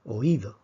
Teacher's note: en cambio en la palabra oído la fuerza está en la y